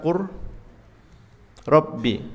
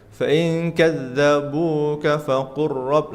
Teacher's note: apabila huruf pertama sukun serupa dan sejenis, maka diidghamkan seperti lafaz qurrabbi, balla